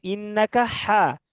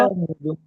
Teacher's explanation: হাটা আসবে গলার হলকের মধ্য থেকে। মাঝখানে হ্যাঁ, তাহলে মাঝখানে একটু কিন্তু শক্তি দিয়ে, দেখেন আমাদের সবার একটা ইয়ে আছে, হলকুম একটু উঁচা জায়গা আছে, দেখছেন সবার গলায়।